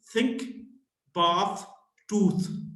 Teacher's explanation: the voiceless dental fricative